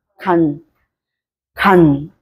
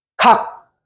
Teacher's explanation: 간. 하고 간. 하고 좀 길어지잖아, 소리가. 늦게 닫혀요.